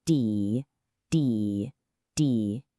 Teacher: Now for the fourth tone. Start high and then a quick, sharp drop.